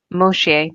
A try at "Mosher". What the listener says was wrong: You tried to make it sound French, I think.